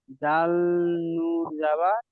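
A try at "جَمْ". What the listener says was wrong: নুন নেই এখানে, এই যে মিমটা আছে, এখানে এই যে মিমটা আছে, এই মিমটার সাথে মিলাতে হবে। জা, জাল মিম জাবার জাম, জাম, জাম, জাম, জাম,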